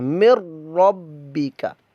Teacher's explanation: مر ربی، با مشدد قلقلہ ہے، جماؤ کر کے اس کو پڑھیے گا، اور کاف کے اوپر حرکت ہے مطلب کہ متحرک ہے، اس کو لمبا نہیں کرنا، مر ربی کا، یہ غلط ہے، کا لمبا ہو گیا، الف مدہ کے اندر چلا گیا، یہ تو کاف کے اوپر زبر جو ہے حرکات کو بغیر کھینچے بغیر جھٹکا دیے معروف پڑھتے ہیں، مر ربی کا۔